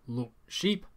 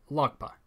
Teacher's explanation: The first one with a glottal stop and the second one with a velar stop.